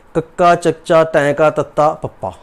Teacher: ਸਾਹ ਥੋੜੀ ਮਾਤਰਾ ਵਿੱਚ ਬਾਹਰ ਨਿਕਲੇ, ਆਪਾਂ ਉਹਨਾਂ ਨੂੰ ਅਲਪ ਕਹਿ ਦਿੰਦੇ ਹਾਂ